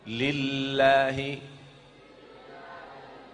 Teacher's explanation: lidah kita ujungnya hampir mau sampai ke gigi atas tapi dia tidak menyentuh gigi atas itu huruf lam